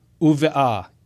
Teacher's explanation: But because there is a quiescent heh at the end it's really just a vowel marker when you get right down to it. We have compensatory lengthening and so the patah lengthens to qamats. The short a vowel lengthens to the long a vowel.